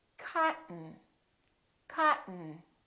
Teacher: when a T is followed by an N, keep your tongue up, don't release it. Just go directly to the N.